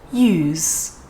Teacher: And that's just because these types of sounds tend to get weaker when they are at the very end of a word. So you can think of it as more of a 50-50 between a Z sound and a S sound.